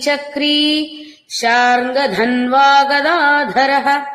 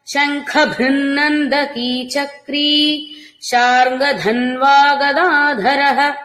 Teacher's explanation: శార్ంగధన్వా ధ మహాప్రాణం శంఖ భృన్నందకి భ మహాప్రాణం